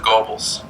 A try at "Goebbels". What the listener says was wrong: It's not pronounced like an O, it's like an O-E.